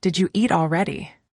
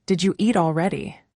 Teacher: Did you hear how did you became didja?